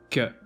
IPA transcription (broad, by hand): k